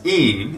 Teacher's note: we get to see how this letter n really is pronounced it's not really a letter n sound what it is is the nasalization of the vowel sound that comes before that